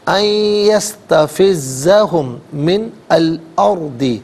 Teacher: ہم میں میم ساکن ہے، اسے من کی میم کے ساتھ ملائیں گے، میم کی آواز کو غنّے کے ساتھ ادا کریں گے